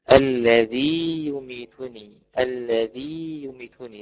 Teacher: والثانية الذي يميتني، الذي يميتني، لازم أبين المد، فلا بد من الاتيان بالمد، ويسمى بمد التمكين، اي بتمكين المدي ويمد حرفين.